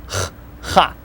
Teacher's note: Kind of rougher sounding than English H.